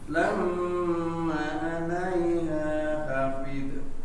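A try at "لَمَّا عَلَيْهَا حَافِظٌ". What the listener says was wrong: Ulangi, ha-nya panjang. Ma-nya dipanjangkan. Lamma. Hafid.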